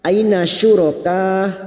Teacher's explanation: Aina fathah bertemu ya sukun kita lunakkan.